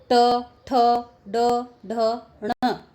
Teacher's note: ट वर्ग जो है वो हमारी जीवा जो है वो मूर्धा से स्पर्श करती है, तालु के आगे जो हिस्सा होता है उससे स्पर्श करती है।